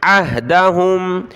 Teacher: عین کو ہا کے ساتھ ملائیں گے. عین ہا زبر اہ، پہلے عین کی آواز پھر ہا کی